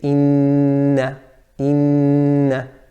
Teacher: there's a ghunnah with the noon which has a shadda